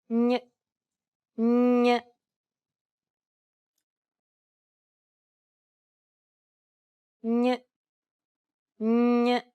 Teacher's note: Instead of using the tip of your tongue as you would with a regular N, try to use the middle part of your tongue to contact the roof of your mouth. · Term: Spanish N